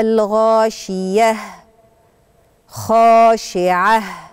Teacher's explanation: نهايات الايات الاولى كلها بالتاء المربوطه هنقف عليها هاء